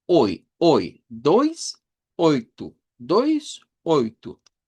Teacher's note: El um que es una nasalización de la u. Diptongo o i, que aparece en el dois, igual que en el oitu, una o corta y una i.